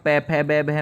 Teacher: पूरा का पूरा प वर्ग है ना होठों से निकलेगी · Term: ओष्ठ ध्वनि